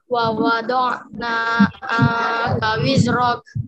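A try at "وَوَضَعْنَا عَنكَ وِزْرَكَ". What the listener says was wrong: Bukan angka angka wizrak. Wa wada'na 'anka wizrak.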